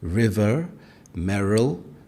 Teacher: Many Northern Irish speakers pronounce the R clearly, especially after vowels. River, merril, both have a prominent R sound.